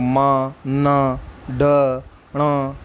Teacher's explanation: नासिक्य यानी कि इसमें नाक से निकलती है आवाज़ इन व्यंजनों को बोलने के लिए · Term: नासिक्य व्यंजन